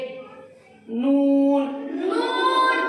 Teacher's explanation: नून का मखरज है जबान की नोक, ऊपर के दांतों के मसूड़ों को लगने से नून अदा होता है